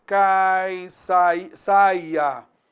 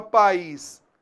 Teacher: Em que o I é a segunda vogal e é tônica.